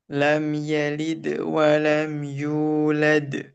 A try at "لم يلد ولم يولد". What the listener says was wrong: Eh, jangan ada jeda sedikit pun. Lam yalid wa lam yulad.